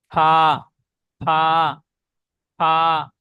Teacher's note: 3 number মাখরাজ, নিচের ঠোঁটের ভিজে অংশ এবং সামনের উপরে দুই দাঁতের আগার সাথে লাগিয়ে উচ্চারিত হয় ফা